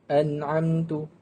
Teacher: apabila nun mati bertemu dengan ain, hukum tajwid di sini adalah izhar halqi, hendaklah dibaca dengan jelas.